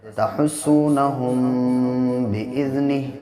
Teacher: میم ساکن کے بعد جب با آتا ہے تو ناک میں آواز کو ٹھہرا کے پڑھتے ہیں